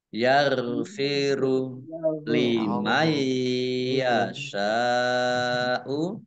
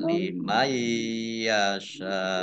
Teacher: Nun sukun bertemu dengan huruf ya, bacaan idgham bi gunnah. Masuk dengan mendengung. Maksudnya nunnya tidak dibaca, langsung masuk ke huruf ya, ditandai yaknya ada tasdidnya.